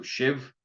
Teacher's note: once again the S is a sh because it's next to an i and the BH there is said like a v